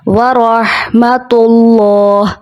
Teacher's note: اللہ کے لام سے پہلے پیش ہے، اس لیے اللہ کے لام کو ہمیں موٹا پڑھنا ہے